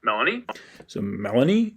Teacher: that first syllable and then it goes straight up so yeah we got a low star followed by a high boundary tone